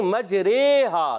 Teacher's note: امالہ کی راہ کو اردو کے لفظ قطرے کی راہ کی طرح پڑھیں گے، یعنی ری نہیں بلکہ رے پڑھیں گے